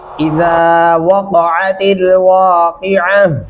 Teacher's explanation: ज़ाल को नरमी से अदा करेंगे और उसके सामने जो अलिफ है वो आवाज़ को लंबा कर रहा है